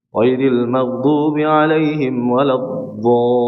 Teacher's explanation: Huruf dhad itu dari tepi lidah. Cara mengucapnya dari tepi lidah.